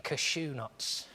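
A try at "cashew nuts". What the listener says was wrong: you're doing it a bit too like a sneeze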